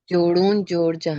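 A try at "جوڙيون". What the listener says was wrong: Not जोड़ूं. देखें, वाव के ऊपर हमजा है तो यूं समझे कि हमजा जो है वो उससे वाव से पहले है. तो जोड़ूं और जोड़ाऊं में फर्क होता है. जोड़ाऊं.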